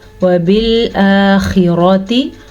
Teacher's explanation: خا ہمیشہ ہی پر پڑھا جاتا ہے، جیسا کہ قاف پر پڑھا جاتا ہے، جیسا کہ صاد پر پڑھا جاتا ہے. · را کو بھی پر پڑھنا ہے کیونکہ را کے پاس ریزن ہے کہ را پہ زبر ہے